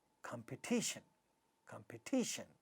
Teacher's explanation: third syllable is getting stressed and therefore at the syllable initial position in this syllable is getting aspirated